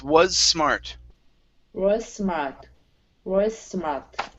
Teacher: So only pronounce one S sound because you have two S's right in a row.